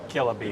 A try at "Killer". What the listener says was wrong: Hard R.